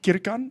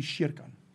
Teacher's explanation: In Swedish, when you start a word with a K, for example, it's actually a sh sound.